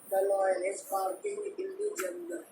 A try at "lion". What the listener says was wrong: The लॉयन नहीं बोलते, लायन बोलते हैं. आई पहले है ना, ओ बाद में है, तो लायन.